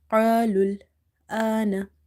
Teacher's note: So here alif is heavy because of qaf, as well as alif is madda, because same situation is here, that there is a fatha before this alif, which makes it madda.